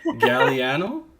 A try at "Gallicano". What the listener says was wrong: There's a C in there. That's how it's spelled.